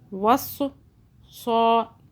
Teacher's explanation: 2 मरतबा आवाज़ें बना रहे हैं ना तशदीद की वजह से